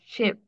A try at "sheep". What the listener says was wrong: Okay, so with those two E's in sheep, then the E is definitely open. So I think you were closer to shep. So it's sheep.